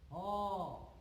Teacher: কারণ হ উচ্চারণ করতে শ্বাসবায়ু কোথাও বাধা পায় না, কেবলমাত্র কণ্ঠ থেকে উচ্চারিত হয়ে সোজাসুজি চলে আসে। হ, দেখো উচ্চারণ করে দেখবে যে কোথাও কোথাও স্পর্শ করছে না, কেবলমাত্র শ্বাসনালী দিয়ে উঠে আসছে এক গরম বাতাস। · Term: কণ্ঠনালীয় ধ্বনি